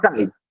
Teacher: cai eu falo junto se a i eu não separo aí eu vou ter o a como vogal certo o a como vogal e o i como uma semivogal